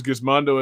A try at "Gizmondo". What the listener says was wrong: It's a soft G.